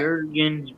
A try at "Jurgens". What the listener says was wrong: It's Jurgens. The J silent.